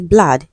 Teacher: This has the central vowel sound ah.